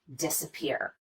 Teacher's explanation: change in pitch on the vowel is not quite as noticeable an example of secondary stress would be the first syllable in this word disappear we do spend some time on this syllable and we do